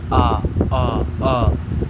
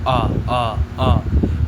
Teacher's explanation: नीचे देखिए आपके कंठ से आवाज आ रही है। कंठ से। आ पूरा मुख खुल जा रहा है।